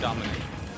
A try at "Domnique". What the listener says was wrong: No, there's no I in between the M and the N. It's Domnique.